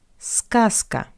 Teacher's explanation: the voiced consonant Z stands before the voiceless consonant C. That's why we pronounce Z as its voiceless analog S